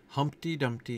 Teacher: Humpty Dumpty, which is a very trochaic name. Stressed, unstressed, stressed, unstressed.